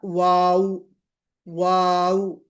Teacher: دونوں جو لپس ہیں گول ہوں گے، کمپلیٹلی گول ہوں گے · تو منہ کا گول ہونا یہ مخرج ہے، ہونٹوں کا گول ہونا یہ مخرج ہے واؤ کا